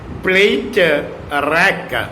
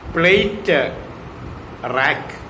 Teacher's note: if juncture is given after plate, the word can be pronounced as plate rack